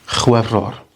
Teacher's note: And then you get the B, which, if you look at French and Welsh, a lot of words shift between B and V, the sound. The F in Welsh sounds like a V.